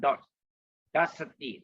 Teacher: D with the dot below is pronounced as dot. Remember? So your tongue must hit the palate